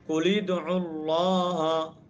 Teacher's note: اس پہلے ساکن کو ہم کیا کریں گے؟ کسرہ دے کر پڑھیں گے۔